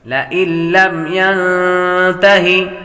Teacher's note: نون ساکن کے بعد تا حروف اخفا میں سے آ رہی ہے، غنہ کر کے پڑھیں گے